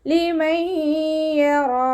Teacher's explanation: ലിമയ്യറാ നൂൻ സാക്കിനയ്ക്ക് ശേഷം ഇദാം ബൗനയുടെ അക്ഷരമായിട്ടുള്ള യാ വന്നു. നൂൻ സാക്കിനെ യായിലേക്ക് ലയിപ്പിച്ച് ഉണയോട് കൂടി ഓതി കൊടുക്കുക കേട്ടോ. റോ ഫത്തഹയാണ്, ഉയർത്തി ഉച്ചരിച്ച് കൊടുക്കുക.